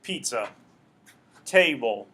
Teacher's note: those would be examples of stressing the first syllable, not stressing the second one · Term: trochaic